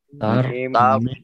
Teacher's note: تا جو ہے پتلا ہے اور را موٹا ہے